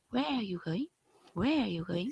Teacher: you see, you got the strong word. Where and going.